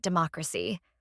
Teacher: a four syllable word ending in Cy in this case the stress is also on the third to last syllable